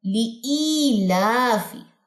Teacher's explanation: لی لمبا نہیں کرنا, ای لمبا کرنا ہے